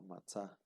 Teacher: el alef, cuando está al final de la sílaba se hace quiescente y por compensación se alarga la vocal precedente